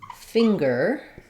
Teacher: So if I look up finger, I'll see I have finger. I have the NG sound plus the g sound, finger.